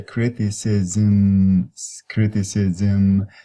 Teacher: So you can do it in phonetic alphabet as m, and put a dot under the m to say this is not the regular m, this is the syllabic m, because it gives you a syllable on its own. You can even put the schwa at the end between the s and m, criticism.